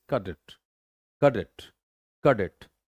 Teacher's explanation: इसको जल्दी बोलना है. डेट पे जोर है, लैटर पार्ट पे, लैटर सिलेबल पे यहाँ पे आप जोर देंगे